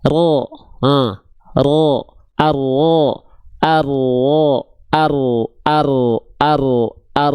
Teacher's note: Jadi si ujung lidahnya mah dia enggak betul-betul nempel teman-teman. Yang nempelnya itu bagian punggung lidah. · huruf ro itu dilafalkan bukan betul-betul dari ujung lidahnya banget. Ro memang dilafalkan dari ujung lidah tapi bukan ujungnya banget.